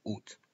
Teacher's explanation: pero los franceses no pronuncian la a. Es uno de los pocos casos, uno de los pocos, pocas palabras en francés, donde no se pronuncia la vocal principal.